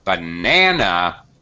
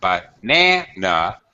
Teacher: banana the middle syllable is stressed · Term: primary word stress